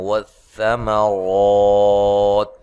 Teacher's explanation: ثا کو نرم ادا کرنا ہے اور را کو موٹا ادا کرنا ہے